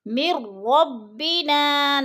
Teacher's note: میم کو را کے ساتھ ملا کے ہم نے ادغام کرنا ہے، درمیان میں نون ساکن کو نہیں پڑھنا۔